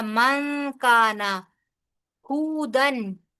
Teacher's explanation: नून साकिन के बाद काफ आ रहा है लिहाजा यहां पर इफा होगा